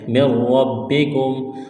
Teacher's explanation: نون ساکن کے بعد را ہے تو یہاں نون کا را میں ادغام کریں گے بغیر غننے کے، مِن رَّبِّکُم، را کو موٹا کرنا ہے، را اور با میں سختی کرنی ہے۔